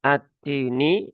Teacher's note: lam bertemu dengan huruf ta sehingga t-nya diberikan tanda tasydid ya ee sehingga lamnya tidak terbaca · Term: idgham syamsi